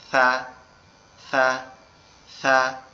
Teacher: এই জিহ্বার আগার অংশটা, সামনের এই দুইটা দাঁত, এই দুই দাঁতের আগার সঙ্গে হালকা করে লাগবে, লেগে উচ্চারিত হবে সা, সা, সা, নরম আওয়াজে।